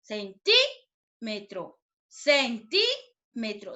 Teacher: ¿Dónde suena más fuerte, chicos? Claro, en la sílaba ti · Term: sílaba tónica